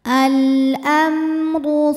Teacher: gunah musyaddadah atau wajibul gunah atau mim musyadadah sebab mim bertasdid cara bacanya didengungkan jadi kita tahan bunyi mnya sampai ada suara masuk hidung